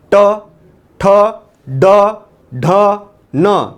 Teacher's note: मूर्धन्य म्हणजे मृदेला लागून बाहेर येत आहे